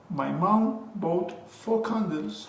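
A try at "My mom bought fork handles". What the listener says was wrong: Fork handles. It's not the same sound. The H. Because in the first one, there's no H.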